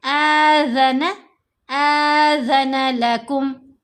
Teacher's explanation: ذال تھوڑی سی زبان منہ سے باہر آئے گی، نظر آپ کی تھوڑی سی ٹپ جو زبان کی ہوتی ہے۔